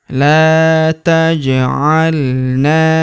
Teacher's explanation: huruf ja berharokat sukun kita pantulkan atau kita qalqalahkan.